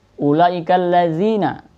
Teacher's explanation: Kenapa demikian? Karena masuk mad wajib muttasil, harus dibaca panjang.